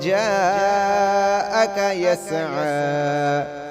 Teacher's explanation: یہ جاء 4 الف کی مقدار کھینچ کر پڑھا جائے گا